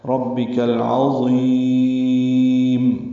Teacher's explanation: کو العظیم کے لام سے ملا دیں گے، اظہار قمری ہوگا، عین وسط حلق سے ادا ہوگا ، ضا پر پڑھیں گے اور اس کو لمبا کریں گے، · اور میم ساکن پہ وقفاً اظہار ہے ، ربک العظیم۔ پوری آیت ملا کے ہی پڑھنی ہے۔ پس